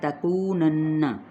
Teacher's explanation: کو پہ واو مدہ اور نون پہ غنہ